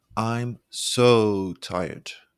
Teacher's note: your voice gets lower as you stretch the words